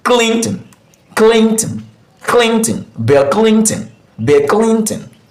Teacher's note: So we usually stress the first syllable, which is clean.